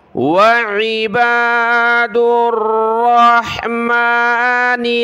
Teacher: عین کو گلے سے نکالا